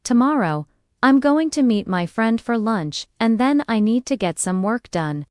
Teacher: Stress tomorrow. Meet friend, lunch, and work. The other words should be softer and faster. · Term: natural rhythm of English